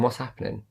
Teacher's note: I'm not saying the G at the end of happening